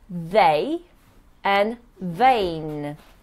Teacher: in V, the lip touches the teeth